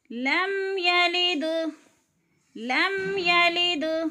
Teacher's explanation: دال پہ قلقلہ ہے کیونکہ دال ساکن ہے اور حروف قلقلہ میں سے ہے۔